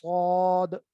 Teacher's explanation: जबान का पिछला सारा हिस्सा वो नीचे हो जाता है, इस तरह अंदर ये खला बन जाता है, उसमें आवाज भारी हो जाती है